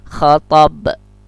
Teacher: dia termasuk qalqalah juga. Kalau kita matikan khatab. Nah, dia mentul.